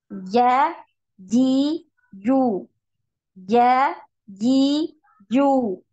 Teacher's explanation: ya sama tidak punya aliran suara tidak punya aliran nafas jadi ketika antuna mengucapkan huruf Jim tidak ada nafas yang keluar dari dalam mulut ya tidak ada hembusan nafas